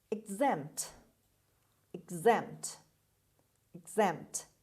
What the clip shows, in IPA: ɪɡˈzempt